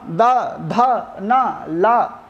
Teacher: इन वर्णों का उच्चारण करते समय हमें अपनी जिह्वा को दंत में स्पर्श करना पड़ता है